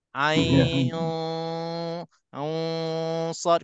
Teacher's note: Sad pun huruf sad. Jadi nun mati bertemu dengan sad, hukumnya ikhfa. Ada dengung 2 harakat di sini. Ain sad, kena ada 2 harakat di sini.